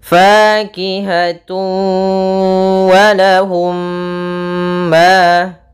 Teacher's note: Kemudian fakihatun wa, ada tanwin berupa dhammatain bertemu dengan huruf waw, maka ini kita namakan dengan idgham bi gunnah. Yaitu cara membacanya, masukkan suara tanwinnya kepada huruf waw dan ditahan dengan gunnah. Karena idgham itu artinya memasukkan, bi gunnah artinya dengan gunnah, dengan penahanan.